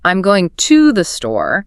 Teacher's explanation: I'm emphasizing the word to